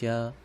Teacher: ज के उच्चारण में भी कंपन हो रहा है